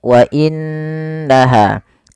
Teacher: Apabila ada nun berharakat tasydid, kita hukumi dengan bacaan gunnah, yaitu suara nunnya kita tahan dengan sepanjang 2 harokat